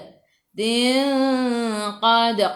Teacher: Dal qalqalah sughra. Lantunannya kecil.